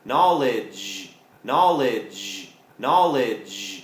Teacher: มันลงท้ายด้วยเสียงดเด็กแล้วก็จานด้วยนะครับแล้วจานของเราก็ต้องเพิ่มเสียงที่ลำคอนิดนึงด้วยนะครับ